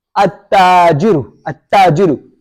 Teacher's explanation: Did you pronounce the lam? No. We skipped the lam. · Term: lam skipped